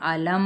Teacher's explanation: اور میم علم، یہ دیکھیں میم کا کیسے علم بند ہونٹوں کے تری والے حصے سے میم ادا ہوتا ہے.